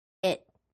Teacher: When we have a t at the end of a sentence in U.S. English, we do not release or finish the t sound. Instead, just hold your tongue at the top of your mouth without finishing the sound.